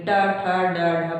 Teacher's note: टा बोल रहे हैं तो जीवा किसको छू रही, मूर्धा को छू रही है, टा ठा डा ढा, बहुत तेज से जाके छू रही, टा ठा डा ढा, दांत के पास जाके छू रही, तो वो क्या है, हमारा मूर्धा है।